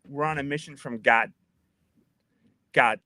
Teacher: the D is actually becoming something of a t there